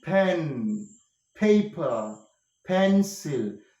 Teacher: come to a contact and there is a close contact yeah air is kept inside the oral cavity the mouth cavity pressure is made so much of pressure is made and the pressure is so · the sound is produced by a contact between the lower lip and the upper lip. Yes, both the lower lip and upper lip come to a contact, and there is a close contact.